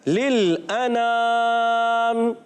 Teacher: यहाँ लाम साकिन है। पहला लाम दूसरे लाम से मिलेगा, मगर लाम को हिलाना नहीं।